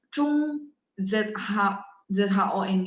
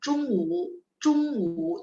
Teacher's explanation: ZHONG pas kita baca memang O-nya sedikit agak U. Kalau ikut phonetic symbol-nya Taiwan, malah benar-benar dia phonetic symbol-nya U gitu ya.